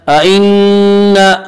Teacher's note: ائنا الف مدہ الف ہمیشہ مدہ ہوتا ہے، الف سے پہلے زبر ہوتا ہے، الف مدہ کو ایک الف کے برابر کھینچ کر پڑھیں گے۔